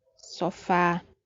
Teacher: Sofá é uma palavra que tem a sílaba forte na última posição, ou seja, é oxítona, e termina com a letra A.